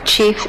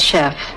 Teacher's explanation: We know that the first one, chief, was borrowed before the 16th century, and the second one, chef, after the 16th century, because we know that French underwent a sound shift in the meantime from the ch sound to the sh sound in that environment.